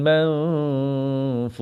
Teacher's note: Nun kosong kena dengung tuan-puan. Nun kosong kena dengung ya.